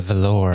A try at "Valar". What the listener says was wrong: The Valar. Valor is like a material. It's very soft. It's the emphasis on the wrong syllable. That's all we're saying.